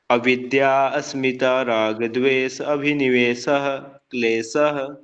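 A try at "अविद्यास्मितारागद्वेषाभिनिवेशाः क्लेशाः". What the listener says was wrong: जोड़ के बोलिए, अभी आपने अलग अलग बोला इनको। अविद्या अविद्या अस्मिता नहीं बोलेगा यहाँ पे, आस्किप है देखो।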